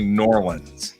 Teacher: in Texas they were squishing the two words together to make it New Orleans